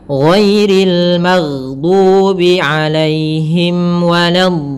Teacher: Nah, di sini lin ada huruf ya sukun yang mana ya termasuk huruf mad. Maka kita boleh memanjangkan linnya itu panjang. Boleh dua harakat, boleh empat harakat, boleh pula enam harakat. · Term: mad arid sukun